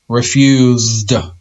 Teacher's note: the s sounds like a z so because the s sounds like a z it's going to be a d sound